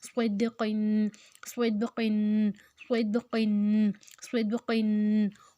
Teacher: دال کے اوپر حروف کلکلا ہے تو آواز کو ہلا کر پڑھیں گے